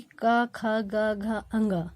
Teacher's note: देखिए, अगर हम का वर्ग को उच्चारण करते हैं तो ये कंठ से निकलता है। का वर्ग की का, ख, ग, घ, अंग, ये 5 अक्षर कंठ से निकलते हैं।